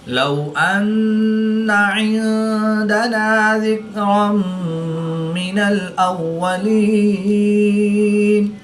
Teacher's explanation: دو زبر کی تنوین کے بعد میم حروف یرملون میں سے ہے، تو یہاں پر ادغام ہوگا، یعنی غنہ کر کے پڑھیں گے۔ · نون ساکن کے بعد دال حروف اخفا میں سے ہے، تو یہاں پر اخفا ہوگا، یعنی غنہ زمانی کر کے پڑھیں گے۔